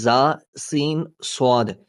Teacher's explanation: इन 3 हुरूफ में जा, सीन, स्वाद को अदा करते वक्त सीटी की तरह तेज आवाज निकलती है